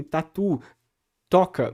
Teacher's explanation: palavras em português que começam com T, que não são aspiradas desse jeito, não tem essa quantidade de ar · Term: T seco